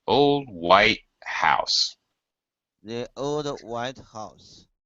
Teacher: And then house, last word, house. A little higher and then hooks low because we need the final falling intonation.